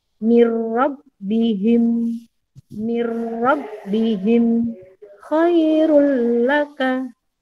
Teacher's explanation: Hurufnya hanya ada 2, yaitu lam ro. Cara membacanya adalah tidak dengung, langsung masuk ke huruf berikutnya. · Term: idgham bila gunnah